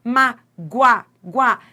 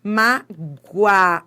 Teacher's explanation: Você vai do fraco pro forte. Olha esse O com som de U. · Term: semivogal